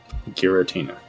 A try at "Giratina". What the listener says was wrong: Giratina. Just don't put the N in there. It's not Giratina, it's Giratina. There's just no N.